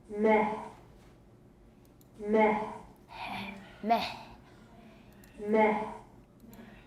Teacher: And here's the voiceless epiglottal fricative.